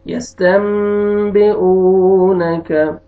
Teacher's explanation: آگے واو سکون سے پہلے ضمہ، آپ نے واو کو کھینچنا ہے، واو مد ہے